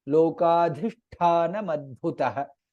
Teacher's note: There are three mahapranas in this word. Lokadhi dha mahaprana, lokadhishtha tha mahaprana, lokadhisthana madbhutah bha mahaprana again.